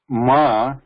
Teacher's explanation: the ma is a labial as well as a nasal whereas the anaswara is a pure nasal sound it's not liberal